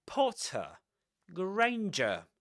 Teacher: Potter and Granger end with a schwa.